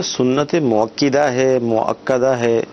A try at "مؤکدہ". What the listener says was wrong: اس میں یہ کہ سنت مؤکدہ یہ نہیں ہے، کاف کے اوپر زبر ہے، سنت مؤکدہ اس طرح پڑھا جائے گا۔